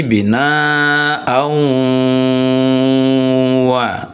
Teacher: Dia mesti harus didengungkan. Artinya masuk ke rongga hidung bunyinya.